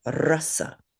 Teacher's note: When it's a consonant, you want to roll that R more like a Spanish or even a Russian R, like a R. [snorts] So if we say rasa which means taste like aka rasa let's say rasa.